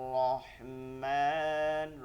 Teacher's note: দুইটা র ধরার সময় একদম সুন্দর করে ধরতে হবে মোটা করে